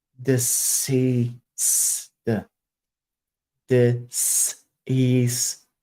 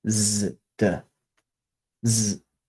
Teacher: Now, the difference between disease and deceased, even if you make the D sound the same rather than D or D, if you make that sound the same, the difference is that the S sounds in deceased are all unvoiced, whereas diseased, the difference is you turn your vocal cords on.